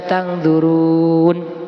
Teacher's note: Nah, mad thaobi'i yang diwakafkan menjadi bacaan mad arid lisukun. Bacaan panjangnya dibaca enam harakat atau tiga alif